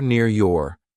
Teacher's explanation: And these R's, we don't say them because a consonant comes after them